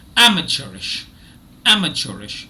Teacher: already you know that the first syllable is stressed